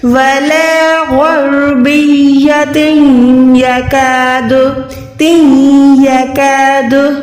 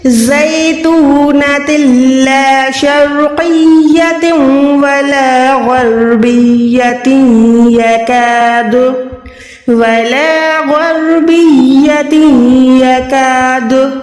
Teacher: آواز کو ناک میں لے جا کے ہولڈ کرنا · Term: ادغام گننے والا